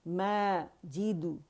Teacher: جب آپ ال کہیں تو اقص الحلق سے آپ کا حمزہ نکلے اور لام پہ آپ کی زبان جائے